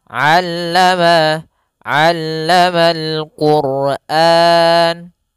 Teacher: pada huruf ain jangan sampai dibaca allamal Qur'an, jangan pakai alif, jangan pakai hamzah. Tapi di sini huruf ain, allama, allamal Qur'an.